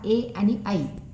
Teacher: कंठ तालव्य वर्ण कोणते आहेत पहा ए आणि आई स्पर्श भाग कंठ आणि टाळू